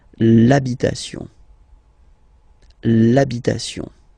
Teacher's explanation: Even if you've got this H, then the first sound you hear is A. Okay, so for the same reason you will have to take this A away, and then you get this l'habitation, l'habitation.